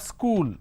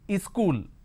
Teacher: people in northern india they add another vowel sound in front and that is e sound and they pronounce this as ischool the moment you add another